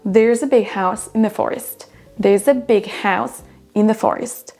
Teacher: Le in the, on l'entend quasiment pas. Ce ne sont pas des mots qui apportent vraiment du sens.